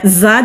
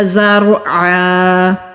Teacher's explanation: دانتوں کو آپس میں ملائیں گے اور زبان کی ٹپ نیچے والے مسوڑے پر مضبوطی سے لگائیں گے تو زا بزنگ ساؤنڈ کے ساتھ یعنی کہ وائبریشن کے ساتھ ادا ہوگا۔ را ساکن سے پہلے زبر ہے تو را کو بھی موٹا پڑھیں گے۔